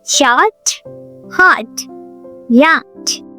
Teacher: In American English, it's yacht with a relaxed O sound like hot.